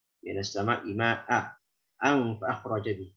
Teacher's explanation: Kalau waqaf wasal tanwinnya jelas dan menjadi hukum ikhfa. Tanwin ketemu fa.